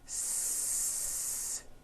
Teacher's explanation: The S consonant, made with air going through your front teeth.